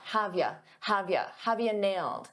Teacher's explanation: For pronunciation, I said have you, but a lot of native speakers reduce you to just a ya.